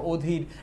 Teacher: শব্দের শুরুতে যদি অ থাকে, এরপর যদি দীর্ঘ থাকে, তাহলে এটা ও হয়ে যাবে, অধীর। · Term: সংবৃত